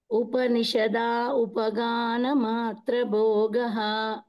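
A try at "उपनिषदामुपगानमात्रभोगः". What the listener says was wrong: ఉపగాన మాత్ర అన్నారు అది తప్పు ము రావాలి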